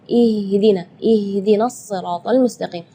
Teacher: makhraj huruf H itu adalah dari tenggorokan. Jadi keluarnya tipis